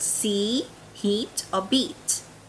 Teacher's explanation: Thai people usually pronounce these words longer than native speakers of English. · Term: tense E or long E